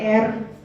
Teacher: Indonesian people pronounce the R sound very like clearly, like you trill the tongue, so it's like R.